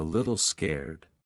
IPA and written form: ˈlɪtl skɛrd (Little scared)